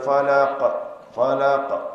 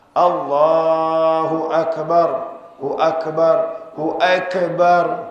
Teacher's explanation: Yang qalqalah itu qaf. Huruf qaf ada qalqalah, huruf kaf tidak.